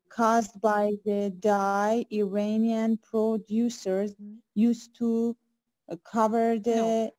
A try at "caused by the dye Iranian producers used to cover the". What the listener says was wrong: not like that. Used there should be a pause. To cover. Don't say used to. Used to is something else.